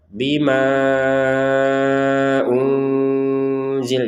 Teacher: Jadi ma-nya kita panjangkan 4 sampai 5 harokat dengan adanya harokat bendera ini. Dan syarat yang berikutnya adalah karena digabungkan panjangnya ma dengan hamzah.